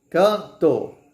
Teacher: campo ou canto certo se você tentar o nariz Ao canto você vai sentir que o ar quer sair pelo nariz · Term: nasais